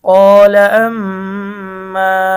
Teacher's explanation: হরকতের বামে মিমের মধ্যে তাসদিদ হয়েছে, গুণনা করে পড়তে হবে।